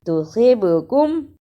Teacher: با پر قلقلہ کرنا کیونکہ با پر جزم ہے، اور جزم کی صورت میں با حرف قلقلہ ہے، یعنی اس لفظ کو ہلا کر پڑھنا ہے